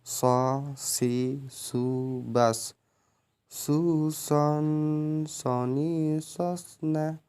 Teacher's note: Yang membedakan shin dan shad adalah suara menebal saat melafalkan huruf shad.